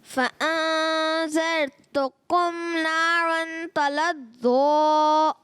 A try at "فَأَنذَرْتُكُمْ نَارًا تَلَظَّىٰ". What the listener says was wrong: آپ نے فَأَنذَرْتُكُمْ پیارے بچے ذال کی ادائیگی کمزور اور را کو بھی پر کرنا ہے اور نارن اخفا کا غنہ بھی کریں.